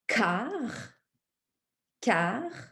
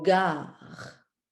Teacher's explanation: Alors, je peux dire car, car, et puis je peux dire gare, car, gare. Je fais appel à ma gorge, ça va vibrer dans ma gorge. · Même position au niveau de ma bouche, c'est la même position, mais le K, pas de vibration, puis le G avec vibration.